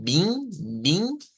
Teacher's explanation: es una I nasalizada